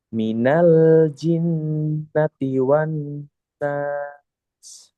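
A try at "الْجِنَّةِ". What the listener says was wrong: jimnya jangan ci tapi ji ji kering. Minal ji coba. Minal jinnati wan nas.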